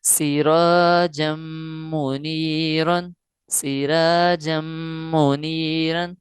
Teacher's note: را باریک پڑھیں گے کیونکہ پہلے والے حرف کے نیچے زیر ہے، زیر اصلی ہے، زیر عارضی نہیں۔